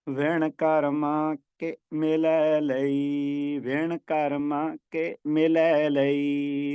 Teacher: ਹੁਣ ਇੱਥੇ ਕਰਮਾਂ ਤੇ ਠਹਿਰਾ ਨਹੀਂ ਹੈ ਕਿ ਨਾਲ ਹੀ ਉਚਾਰਨ ਕਰਨਾ ਹੈ